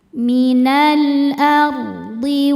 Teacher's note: Minal ardi ar. Ro sukun dibaca tafkhim ya. Karena apa? Karena sebelum ro sukun ada baris fathah. Maka cara bacanya ditebalkan.